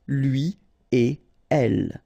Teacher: So after this conjonction et, like we've got here, you don't make any liaison. So no links after et.